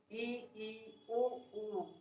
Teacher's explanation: ऐसे स्वर जिनके उच्चारण में मुख द्वार लगभग बंद होता है, वो समृत स्वर कहलाते हैं।